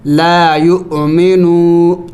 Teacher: حمزہ پر سکون ہے تو اس کو جھٹکا دے کے پڑھا جاتا ہے